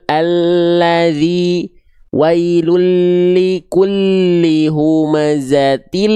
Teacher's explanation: Huruf lam itu dilafalkan dari tepi lidah bagian depan yang kiri di sini, menyusur sampai ke ujung lidah, dan tepi lidah bagian depan yang kanan, ya, yang ini, menyusur sampai ke ujung lidah, disentuhkan ke langit-langit bagian depan.